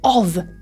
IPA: ɒv